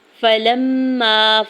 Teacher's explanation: فلما، فا کے زبر کو جلدی سے ادا کرنا ہے، لام کے زبر کو میم مشدد کے ساتھ ملاتے ہوئے غنہ کرنا ہے اور ساتھ الف اٹیچ الف مدہ بھی ہوگا۔